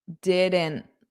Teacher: So, I'm just not pushing out that T at the end.